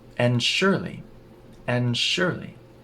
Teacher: now that D disappears and we connect the n in and to S